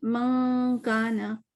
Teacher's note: ٹھیک ہے, آدھی آدھی چلے گی. تو منہ سے بھی آواز آ رہی, جیسے من کانا, تو ناک سے بھی آ رہی ہے. تو یہ اقفا میں آواز آدھی آدھی ہو جاتی ہے, سمجھ لیں.